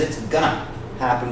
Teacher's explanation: it's not going to happen he says it's gonna happen because he runs it together